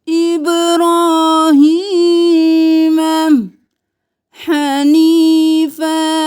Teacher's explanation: ہا کو گلے کے درمیان سے اور یا مدہ ہے کھینچے